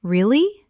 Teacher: when you ask a question like, Really? your voice goes up slightly at the end